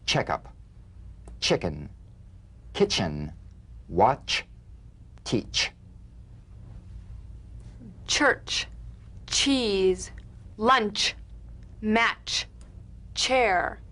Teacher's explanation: a sharp, crisp, percussive sensation between the tip of the tongue and the gum ridge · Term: crisp staccato ch